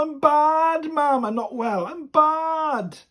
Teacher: i'm bad with that elongated bad